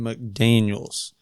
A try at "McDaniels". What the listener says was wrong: Did you mispronunciate my last name? You said Mac Daniels.